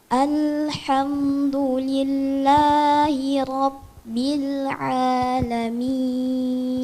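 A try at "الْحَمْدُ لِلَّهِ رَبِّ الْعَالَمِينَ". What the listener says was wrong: Sama juga lamnya. Jangan bil'a. Itu qalqalah. Caranya bagaimana biar tidak mantul? Kita harus buat suaranya mengalir dan tahan lidahnya di makhraj lam bil sampai masuk ain. Jangan bil'a.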